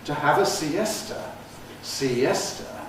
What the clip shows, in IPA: siˈestə